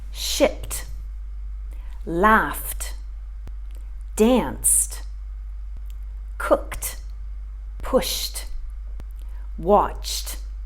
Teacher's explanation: So any verb in its infinitive form, if it finishes with an unvoiced sound, then we're going to make the sound of t when we put it into the past simple form. So the ed is going to sound like t, not id.